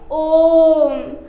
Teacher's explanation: तो इसका जब उच्चारण करेंगे तो होता है ओम। तो इसमें 3 गुना अर्थात 3 मात्रा काल का समय लगता है, इसलिए इसे प्लुत स्वर कहा जाता है।